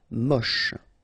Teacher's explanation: Don't insist on the final E, then you get the last sound is sh